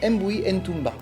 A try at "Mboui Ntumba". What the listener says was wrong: On prononce pas le N.